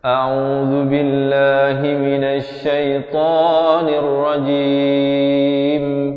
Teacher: Lafz jalalah di sini dibaca nipis 2 harakat.